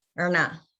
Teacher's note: in Garna, the Erna sound is the retroflex. It's not like Ganna, it's Garna.